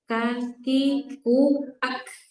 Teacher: Karena kaf nanti punya sifat namanya syiddah, ya sandaran makhrajnya kuat. Cuma dia ada nafas, makanya dia ringan kedengarannya.